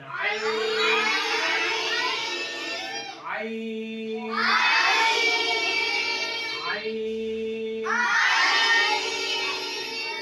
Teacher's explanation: সবাই হলকের মধ্যখানে চাপ দিয়ে উচ্চারণ করবেন